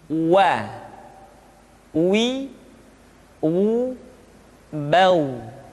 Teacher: huruf wa diucapkan dengan cara memonyongkan dua bibir kita.